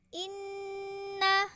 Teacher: cara membacanya dengan dengung serta ditahan tiga harokat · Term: gunnah